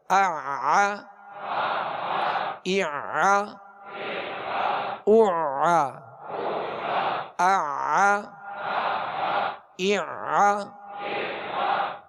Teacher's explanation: आईन अदा करेंगे वस् हलक से